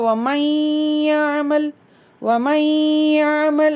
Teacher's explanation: நூனை வந்து மூக்குலயும் யாவை வாயிலையும் நாக்குலையும் வச்சு மெர்ஜ் பண்ணி சொல்லணும் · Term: இத்ஹாம்